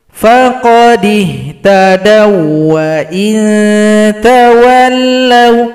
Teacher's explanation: Kalau kita lanjut namanya idgham mutamathilain, pertemuan huruf waw sukun dengan huruf waw yang hidup.